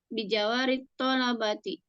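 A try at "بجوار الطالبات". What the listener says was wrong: Biji. Bijiwa. Bukan bijawa. Biji.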